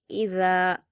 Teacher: और ज़ाल के मखरज को नरमी से अदा किया जाएगा। इ अपने नोक को ऊपर के दो दांतों के किनारे से इस तरह से मिलाएंगे कि आपकी जुबान की नोक थोड़ी बाहर नजर आएगी और नरमी के साथ आवाज आएगी